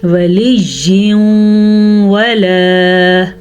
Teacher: دونوں کو آپس میں ملائیں گے، غنے کے ساتھ ملائیں گے، اسے ادغام بالغنہ کہتے ہیں